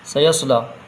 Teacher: سیصلی نارن ذات لہب، پہلے سین کی آواز نکلے گی، پھر صاد کی آواز، سین کی آواز باریک ہوتی ہے، صاد کی آواز موٹی ہوتی ہے، لام میں کھڑا زبر ہے، تھوڑا کھینچ کے پڑھیں گے